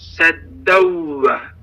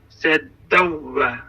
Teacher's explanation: Burada da idğam baş verdi. Nun hərfi vav hərfi ilə birləşdi və biz nunu gizlədirik. Sanki vav hərfinin təşdidli deyirik.